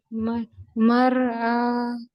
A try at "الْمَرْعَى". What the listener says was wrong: مر مر ہیوی کریے.